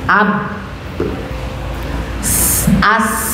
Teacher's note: Habis itu mim, am sama, ba sama mim sama-sama di bibir